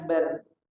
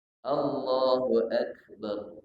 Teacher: Naik pangkal lidah. Nampak dari rahang kita naik. Nah, jadi bukan anhar. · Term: ditebalkan